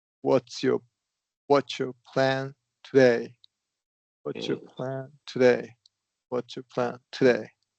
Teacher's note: It should be a schwa, and then that second vowel should be held out longer.